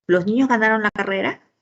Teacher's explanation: vemos la entonación final ascendente